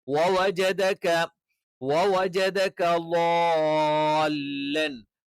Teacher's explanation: നാവ് ചുണ്ട് വൃത്താകൃതിയിൽ വെച്ചുകൊണ്ട് തന്നെ നമ്മൾ ഉച്ചരിക്കണം. ജ നാവിന്റെ മധ്യവും മേലെ അണ്ണാക്കിൽ ടച്ച് ചെയ്തുകൊണ്ടാണ്. ക നിങ്ങൾക്കറിയാം എന്താണ്, നാവിന്റെ തുടക്കം അതിന്റെ മുകളിലുള്ള അണ്ണാക്കിൽ ടച്ച് ചെയ്തുകൊണ്ടാണ്.